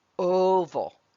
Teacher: at the beginning of that word you heard the o sound that's a long sound long vowel sound